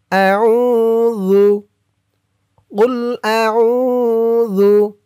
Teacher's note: জু, জালের উচ্চারণটা একদম নরম হবে। জিহ্বার মাথা উপরের দাঁতের মাথার সাথে লাগবে জালের এই উচ্চারণটা করার সময়।